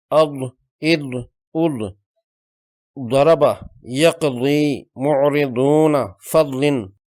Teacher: زبان کے دونوں کنارے جب اوپر والی داڑھوں کے اندرونی حصے سے لگتے ہیں تو یہ حرف درستگی سے نکلتا ہے۔ اگر دونوں طرف مشکل ہو تو ایک طرف لگانے سے بھی ادا ہو جاتا ہے۔ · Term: ضاد